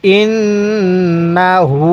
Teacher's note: উল্টা পেশ হু ইন্নাহু এই যে হা এর উপর উল্টা পেশ এরকম উল্টা পেশ থাকলে আমরা এক আলিফ টান দিব